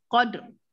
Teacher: Walaupun dia baris di bawah, tapi oleh kerana dia sebelumnya ada huruf yang berbaris di atas, maka dia dibunyikan tebal.